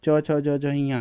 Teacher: च छ ज झइयाँ ये तालु से बोला जाता है।